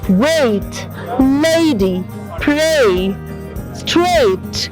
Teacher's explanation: In English language there is a diphthong sound A. ये A और E sound का मिश्रण है, तो इसको जब बोलते हैं A और E इकट्ठा बोलते हैं एक सांस में